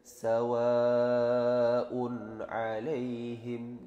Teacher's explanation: Nah, itu karena setelah ada tanda alif bendera itu ada hamzah, maka itu statusnya adalah mat wajib muttasil. Bacaannya wajib, panjangnya 5 harokat.